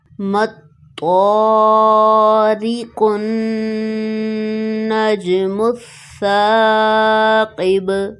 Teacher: اس کے علاوہ نون مشدد ہے، یہاں پر غنہ کریں گے، جیم ساکن ہے، یہاں پر قلقلہ ہوگا، سا میں سیٹی کی آواز نہیں آنی چاہیے۔ مطارق النجم الثاقب، اس لیسن کی لاسٹ لائن نون ساکن پر اخفا ہوگا، نون مشدد پر غنہ اور سین کو ساکن کریں گے سٹاپ سائن کی وجہ سے۔